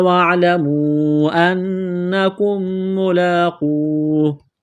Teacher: میم ساکن کے بعد اگلی میم مشدد ہے تو میم کا میم میں ادغام کریں گے، غنہ کریں گے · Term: ادغام مع غنہ